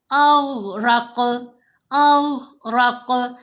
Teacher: اب یہاں ہم نے غین کو بالکل نہیں ہلانا لیکن قاف کو ہلانا ہے، پڑھنا دونوں کو موٹا ہے